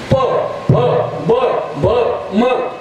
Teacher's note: प फ ब भ म ओष्ठे ओठाला ओठ लागला